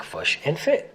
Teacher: the kit-foot vowels are reversed for the words fish and foot to sound like fush and fit.